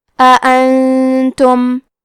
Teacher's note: یہاں حکم ہے اخفاء تو ہم یہ حکم کو غنہ کے ساتھ ادا کریں گے